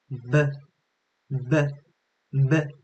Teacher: 성대 부분에 그니까 여러분들의 목젖을 댔을 때 진동이 느껴지게 됩니다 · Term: 유성음